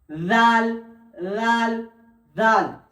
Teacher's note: জিভের আগা এবং সামনের উপরের দুই দাঁতের আগার সাথে লেগে উচ্চারণ হবে